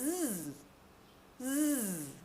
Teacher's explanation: your voice and the the S doesn't there's no vibration here when I add vibration my tongue is in the same spot I'm making an S but when I add my voice it becomes a z